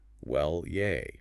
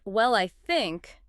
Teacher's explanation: let the pitch glide down just a little at the end and then a tiny pause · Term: little dip